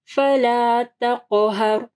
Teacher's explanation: قاف کو جو ہے ہیوی پڑھنا ہے اور قاف کے اوپر جو ہے کلکلہ ہوگا۔ پھر یہاں پہ دیکھیں را ساکن ہے، ٹھیک ہے، را ساکن کے اوپر وقف ہو رہا ہے تو تقہر، تو را جو ہے ہیوی پڑی جائے گی۔